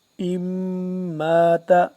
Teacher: میم مشدد پہ غنہ کریں گے